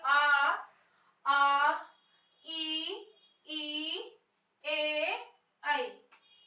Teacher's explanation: इन वर्णों के बोलने में ओठ का आकार फैल रहा है, ना कि गोल हो रहा है, यानी वृत्त नहीं बन रहा। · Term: आवृत्ताकार